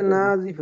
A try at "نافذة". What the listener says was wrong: নাফিদাতুন, নার পরে ফা, নাফিদাতুন, নাফিদাতুন, তিলকা নাফিদাতুন। হাদিহি নাফিদাতুন, নাতে টান আছে, হ্যাঁ।